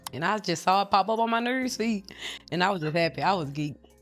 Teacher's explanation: the Memphis accent feels more compressed, less drawn out, and more clipped.